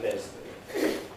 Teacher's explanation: clear L before a vowel in things like Leslie